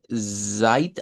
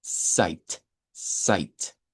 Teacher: el fonema propio, el fonema propio es el africado TS